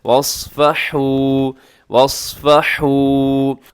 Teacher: واس اور سواد موٹا کیجیے گا. اگر سواد موٹا نہیں کریں گے تو یہ بھی سین میں تبدیل ہونے میں 1 سیکنڈ لگائے گا.